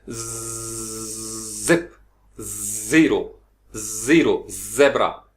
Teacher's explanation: जबान के साथ से फ्रिक्शन पैदा हो रही है और इसमें आपकी एक वॉइस्ड यानी आवाज जो है वो आप फील कर सकते हैं